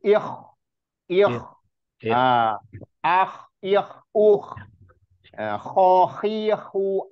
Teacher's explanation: makhijul hurufnya di huruf kah itu masuk huruf yang tadi ditenggorokan tenggorokan bagian atas paling atas jadi kayak orang ngorok suaranya